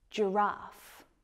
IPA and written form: dʒəˈrɑːf (giraffe)